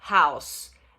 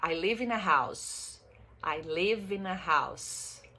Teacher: Som de S no final, não é som de Z.